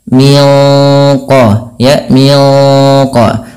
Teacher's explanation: nunnya disamarkan langsung ke huruf qof yang dia menebal · Nah, sama sebagaimana yang awal, yaitu ada bacaan ikhfa hakiki. Kita bacanya nunnya disamarkan langsung ke huruf qaf yang dia menebal.